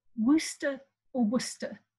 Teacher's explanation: last vowel was pronounced in some sort of indistinct way and the r at the end was probably left off in pronunciation by at least some english speakers · that the city name was pronounced something like worcester or worcester it was two syllables and this last vowel was pronounced in some sort of indistinct way and the r at the end was probably left off in